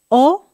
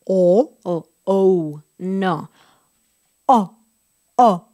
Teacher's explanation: Es un solo sonido abierto hacia afuera.